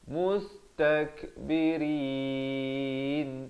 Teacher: Ra di sini dibaca nipis. Mustakbirin gitu Jangan baca dengan tebal.